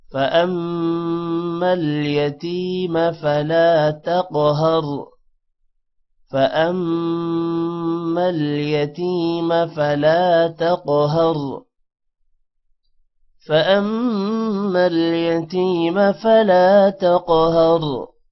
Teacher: فأمل یتیم فلا الف کی وجہ سے لا تھوڑا لمبا ہوگا. تقہر قف پر قلقلہ بھی ہوگا قف موٹا بھی ہوگا اور ہر را موٹا ہوگا.